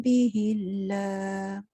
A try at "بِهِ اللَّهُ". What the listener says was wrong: Bihillah. Bunyikan ha dia.